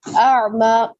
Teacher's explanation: حمزہ میں جھٹکا ہوتا ہے اور عین میں جھٹکا نہیں ہوتا. عین میں فلو ہوتا ہے، یعنی آواز کی روانگی رہتی ہے، رکتی نہیں ہے. اس کے بعد دیکھیں یہاں پہ اعما پہ بھی دیکھیں، یہاں پہ الف مدہ ڈالا گیا.